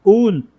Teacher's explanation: दोनों ओठी मिलेंगे, दांत नहीं टकराएगा।